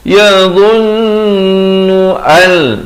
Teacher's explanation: masuk tanpa dengung, nun mati bertemu lam